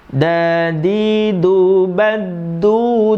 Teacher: Karena dal sukun ketemu dal itu idgham mutamatsilain, makhraj dan sifatnya bertemu. Nah, kalau makhraj dan sifat yang sama kok makhraj dan sifat sama bertemu, maka tidak bisa diqalqalahkan.